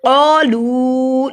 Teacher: لو کو لمبا کیا کیونکہ لو پہ دیکھیے چھوٹی مد ہے, دو الف کے برابر لمبا ہوگا